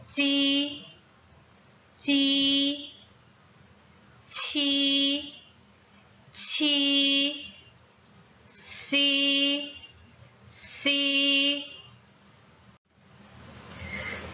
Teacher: 설면음은 입천장과 혓바닥 사이로 숨을 내보내면서 소리가 나요. 입천장과 혓바닥 사이, 이게 붙었다 떨어집니다.